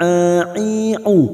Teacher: huruf ain tawasud dan jahar